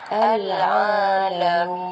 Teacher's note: Ataupun kalau yang ada 6 harakat contohnya seperti mad arif disukun. Okey, dengan kalimah al-alamin, min tu mim ya mati min diwakafkan tu di akhir ayat. Okey, kita baca 6 harakat.